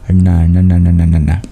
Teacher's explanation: The N with the dot under it, you curl your tongue back. Instead of touching your teeth to produce the N, you curl your tongue back on the hard palate.